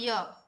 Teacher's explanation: य का उच्चारण स्थान तालु से ही होता है